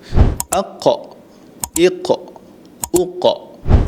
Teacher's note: Suaranya jelas, nafasnya tidak mengalir. Bunyinya terhenti seketika sebelum dilepaskan. Lidah terangkat ataupun bunyinya tebal. · Apa yang dikatakan Imam Ibnu Jazari kalau kita boleh huraikan adalah huruf qaf ini keluar daripada pangkal lidah paling belakang menyentuh di langit lembut. Huruf qaf lebih berat dan lebih dalam nak dibandingkan dengan sebutan huruf kaf. · Huruf qaf ini adalah huruf yang paling tebal di antara huruf-huruf tebal yang lain. · Dan huruf qaf juga melantun bila disukunkan ataupun diwakafkan.